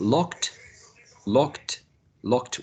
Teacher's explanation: we have k, which is a voiceless plosive as well. And we have to use t, which is also voiceless. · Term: voiceless t